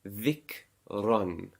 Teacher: So there's a fathatain on it. So you pronounce the Ra, run, with a full mouth, with a rounder mouth. So it won't be ran, it won't be dhikran, it will be dhikran with a rounder mouth.